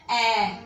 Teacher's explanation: फिर है मध्य स्वर। मध्य स्वर जिसमें जीवा का मध्य भाग सक्रिय रहता है